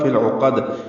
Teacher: عین پر پیش ہے, وسط حلق سے ادا کریں گے, قاف کو پر موٹا پڑھیں گے اور دال سے ملائیں گے, دال پہ قلقلہ ہو جائے گا, فی العقد. اور اگر ملا کر پڑھنا ہوگا تو فی العقدی. · فا کو لام سے ملانا ہے, یا نہیں پڑھیں گے, فا کو فل بن جائے گا, لام سے ملائیں گے تو لام پہ اظہار ہے کیونکہ آگے عین حروف قمری میں سے ہے تو اظہار قمری ہوگا. عین پر پیش ہے, وسط حلق سے ادا کریں گے, قاف کو پر موٹا پڑھیں گے اور دال سے ملائیں گے, دال پہ قلقلہ ہو جائے گا, فی العقد.